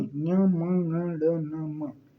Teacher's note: अनुनासिक मतलब नाक से भी हवा निकल रही है ठीक है ना इसको बोलने में नाक से भी वाय निकलती